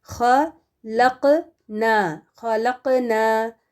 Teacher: پھر دیکھیں قاف کے پر بلو سکون ہے، جس کا مطلب ہے قاف ساکن قلقلہ والا حرف ہے، اس میں قلقلہ باؤنس کرنا ہے